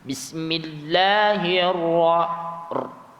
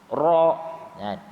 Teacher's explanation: Dia sikit je getaran dia tu. Dia tidaklah terlalu panjang getaran tersebut. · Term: takrir